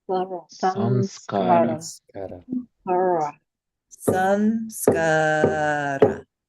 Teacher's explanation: So it's not just sa in this case, it's sam, because the anusvara is pronounced